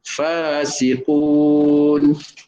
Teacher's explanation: Makhraj dia bibir bawah dan gigi kacip atas. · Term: huruf fa